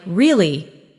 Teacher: Your voice goes up slightly at the end. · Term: Intonation